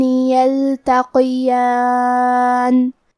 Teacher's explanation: یہاں حرف القاف ہے لہذا ہم حرف القاف کو موٹی آواز میں پڑھیں گے اور کیونکہ اس کے نیچے زیر ہے تو ہم زیر کو ظاہر کریں گے.